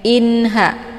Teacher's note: Inha, cukup ditekan saja, tidak perlu ditahan. Hukum bacaan izhar hakiki jelas tiada berdengung. Kemudian ha, dibaca panjang 2 harokah.